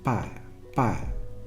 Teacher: they spend more time in the ah type vowel quality and that they are not as invested in their e type vowel quality towards the end of that diphthong